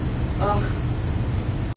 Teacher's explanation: And a visarga, which we're not used to hearing, comes at the end of a word. And it sounds like aha-- a very pronounced H sound.